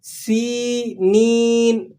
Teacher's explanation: یا ساکن، اس سے پہلے حرف پر زیر ہے، یا مدہ ہے، ایک الف تک اس کو کھینچ لیں